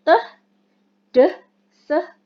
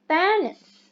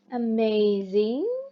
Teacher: The blade of the tongue is used close to the alveolar ridge.